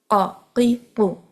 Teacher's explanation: purely نرم تالو کے ساتھ، سافٹ پیلٹ کے ساتھ آپ کی زبان کی جڑ لگے گی، قاف ادا ہوگا